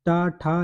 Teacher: मूर्धा की बात करते हैं, जैसे टा। तो टा का मतलब है कि जीभ को उल्टा करके बोला जाता है।